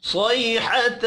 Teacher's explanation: सौद हुरूफ मुस्तअलिया है, इसको भी पुर पढ़ेंगे।